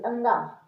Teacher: अनुनासिक, अनुनासिक क्योंकि इनको बोलते समय ऐसा लग रहा है जैसे हम हमारी आवाज़ जो है ना नाक से निकल रही, अंगा, बिना नाक का उपयोग किए अंगा नहीं बोला जा सकता, तो इसीलिए इसको अनुनासिक कहते हैं